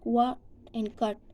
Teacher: in American English, they tend to drop the ta sound in final position. Whenever the ta sound is come in the final position of any word, so they tend to drop it, like look at in what and cut sound.